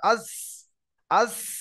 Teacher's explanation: জিভের আগাটা ওই চারটে দাঁত এক জায়গা করে ওর আগায় লাগিয়ে চাপ দিয়ে উচ্চারণ করতে হয়